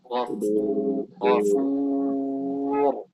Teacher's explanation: Ya dan waw ini tidak ditebalkan sama sekali. Wa khassatan al-waw idza jaa ba'daha mufakham, misal ghafur. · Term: tarqiqil wawi